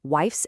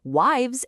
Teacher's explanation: Wife's ends with that puff of air, the voiceless F. Wives ends with that vibration, the voiced V.